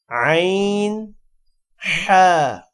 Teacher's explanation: اب عین اور حا جو گلے کا درمیانی حصہ ہے وہاں سے